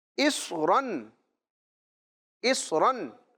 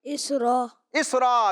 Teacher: 2 زبر کی تنوین وقف میں الف سے بدل جاتی ہے